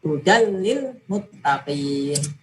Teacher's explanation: Maka ini bacaan idgham. Cara membacanya, tanwin dileburkan ke lam.